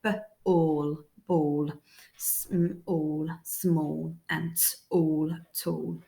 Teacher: the letter A is making a bit of an or sound, although it's not quite a full or sound, like b, all, ball, all, small, and all, tall.